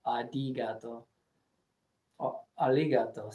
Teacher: R and L is just one sound to them. There's no sounds the same, and it almost sounds like a D in some cases. Like arigato, it's a R, but it's adigato.